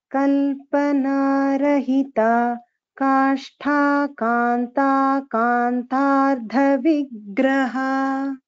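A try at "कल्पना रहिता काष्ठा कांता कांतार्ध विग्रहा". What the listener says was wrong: correct. Uttamam bhagini, dhanyavada.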